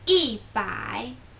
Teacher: one becomes kind of like fourth tone instead of first tone